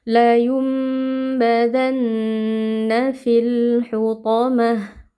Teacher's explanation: maka mad pada fi ini sudah gugur atau tidak dibaca lagi · Huruf th huruf tebal kita baca dengan mengangkat pangkal lidah. Lalu ta marbutah waqof diganti menjadi ha sukun.